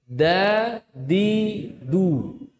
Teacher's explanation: Dalful lisan. Ujung lidah bertemu dengan pangkal gigi seri atas. Bukan pakai punggung murni punggung. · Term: huruf dal